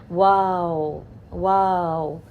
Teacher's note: اب واو کو ادا کرتے وقت دونوں ہونٹ دائرے کی شکل میں آگے کی طرف نکلتے ہیں، اور آواز کے گزرنے کے لیے دونوں ہونٹوں کے درمیان جگہ رہتی ہے